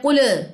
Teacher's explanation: کلکلا نہیں کرنا، احتزاز نہیں ہونا چاہیے کسی قسم کا